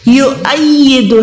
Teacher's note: ہم واو کو نہیں پڑھیں گے بلکہ حمزہ کو ادا کریں گے